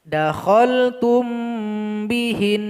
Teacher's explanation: kita sukunkan huruf nun dan kita dengungkan selama 2 harokat.